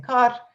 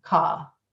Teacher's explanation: the younger speakers were using far less of that post-vocalic R. So instead of saying kar, they were saying, or mor, they were saying ka. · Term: non-rhotic